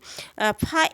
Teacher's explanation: फा एक दंतोष्ठ ध्वनि है